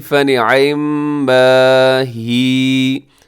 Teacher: آخر میں یا ساکن تو یا مدہ ہو جائے گی، تھوڑا سا کھینچ کے